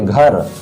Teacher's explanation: रा पर थोड़ा हम लोग बल देते हैं